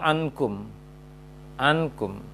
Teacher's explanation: Bacanya adalah setelah a, kemudian baru dengung, masuk ke dengungnya.